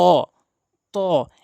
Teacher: আর তা হরফটি জিহ্বার আগা দাঁতের গোড়া থেকে, জিহ্বার আগা ২ দাঁতের গোড়া থেকে উচ্চারণ হয়, সামনে ২ দাঁতের গোড়া থেকে।